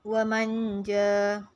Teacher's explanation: Ikhfa, menyembunyikan bunyi nun dan tanwin ke dalam huruf berikutnya